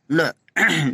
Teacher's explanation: ल बीच में बंद हो रहा है और हवा किनारे से निकल रही है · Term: पार्श्विक व्यंजन